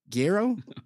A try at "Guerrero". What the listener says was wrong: You gotta roll the R's a little bit. Guerrero?